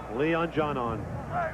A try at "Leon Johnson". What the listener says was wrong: That's how you pronounce it without the S, huh?